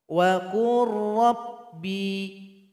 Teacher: Lam tidak dibaca lagi karena sudah 100% bergabung dengan ra. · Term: idgham mutajanisain